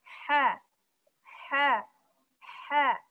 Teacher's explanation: Ha, makhrajnya di tengah tenggorokan. Sama seperti ain. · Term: huruf ha